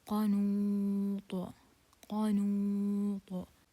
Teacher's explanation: Due to stopping, we will remove this tanween and put sukun عارض.